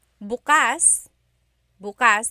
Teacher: the emphasis is on the second syllable that means open. · If you say bukas, bukas, emphasis is on the first syllable.